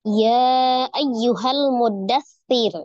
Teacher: kemudian k ada Alif lagi berharakat maka menjadi mad wajib muttasil panjangnya empat